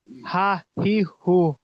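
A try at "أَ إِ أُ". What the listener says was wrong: না, আহ, আহ, হামজা, হা নয়, হামজা হা যাবার আহ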